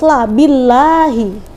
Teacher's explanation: Jadi ketika lafaz Allah itu didahului harokat kasrah, maka bacanya harus la, billahi, ya. Ya, lafaz Allah yang didahului kasrah maka bacaannya jadi tarkik, bunyinya la